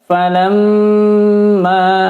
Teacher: Membaca mim tasydid hukumnya adalah gunnah mim ya. Maka ditahan, didengung 4 ketukan. Falamma, jangan falamma, tapi harus ditahan.